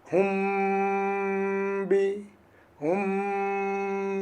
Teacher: মিমের মাখরজ দুই ঠোঁট, এটাকে গোপন করে আমরা সেই আওয়াজটাকে নাক দিয়ে বের করছি। এই জন্য এটা মিম সাকিন ইকফা। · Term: মিম সাকিনের ইকফা